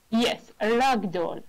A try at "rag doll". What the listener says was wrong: A rag doll. That's right.